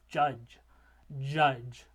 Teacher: it starts with that voiced alveolar stop and ends with that voiced alveopalatal or palatal fricative.